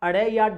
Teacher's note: जब हम अड़े या ढे का उच्चारण करते हैं तो जीभ नीचे गिरती है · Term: ताड़नजात व्यंजन